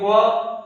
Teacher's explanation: दांत और ओष्ठ दोनों में हरकत या क्रियाएं हो रही हैं